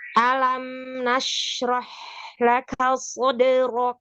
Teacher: yang pertama A-nya jangan diangkat alam, tapi dia ditipiskan